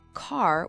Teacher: many American accents, that R sound is almost always pronounced. So, it's car with a clear R and park with a clear R.